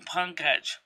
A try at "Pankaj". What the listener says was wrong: His name's Panka. There's the J is silent. It's like the word Baja. His name's Panka.